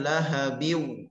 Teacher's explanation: Kemudian lahabiw, tanwin pada huruf ba bertemu waw, maka dibaca idgham bighunnah, dengung dengan menyongkan mulut. Lahabiw mengikuti makhraj daripada huruf waw, dua bibir berbentuk bulatan. Tahan dulu pada makhrajnya.